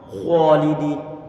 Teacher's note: Ini yang sering terjadi suatu kesalahan pula di saat misalnya kita mengatakan khalidin. Huruf kha memang dia tebal, memang dia perlu untuk dialirkan suaranya, cuma bibir jangan dimonyongkan kalau dia tidak dalam kondisi dhammah. Khalidin, sehingga perlu untuk didatarkan.